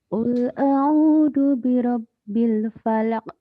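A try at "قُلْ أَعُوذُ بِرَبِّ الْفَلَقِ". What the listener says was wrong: Itu tasdidnya kurang sedikit ya. Qul a'u ainnya nih. Qul a'u ainnya ya Bu ya. Qul a'udzu.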